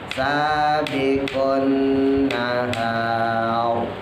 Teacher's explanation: tebal karena jatuh setelah harokat fathah